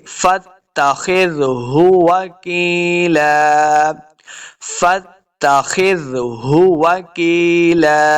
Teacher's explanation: واو کو جب ادا کریں گے تو اپنے دونوں ہونٹ گول ہوں گے تب واو کا مخرج صحیح ادا ہوگا